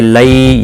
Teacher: یا لین ہے، تھوڑا نرمی کے ساتھ کھینچ کر ادا کریں گے